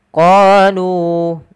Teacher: Alif yang ditandai dengan sifar mustadir tidak dianggap. Qalu, qa panjangkan dia 2 harakat karena dia mad tabi'i